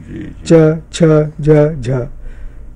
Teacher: इसी तरह से हम कहें कि चा, तो चा में क्या है कि हम चा तक जाकर उसे छूते हैं, जो वर्ष का जो भाग है हम, और उसके साथ हवा घर्षण के साथ निकल रही है, तो ये इसको हम कह देते हैं स्पर्श संघर्षी व्यंजन है।